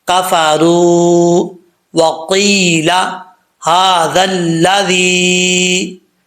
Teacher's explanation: اب یہاں پر آخر پہ کفرو ہے، یہاں پہ جب لوگ پڑھتے ہیں تو را کے آگے جو واو ہے اس کو ایک الف کی مقدار کھینچنا ہوتا ہے، لیکن وہ کھینچتے نہیں ہیں، اس کو پوری مقدار نہیں کھینچ پاتے، کفرو وقیل ھذا پڑھ جاتے ہیں۔